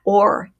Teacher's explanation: on the chair it changes it dramatically listen to that or it's almost like all you can really hear is the r